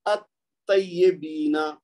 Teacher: ٹھیک ہے، یہاں پہ طا ہے نا، یہ حرف شمسی ہے تو لہذا لام کی آواز نہیں آئے گی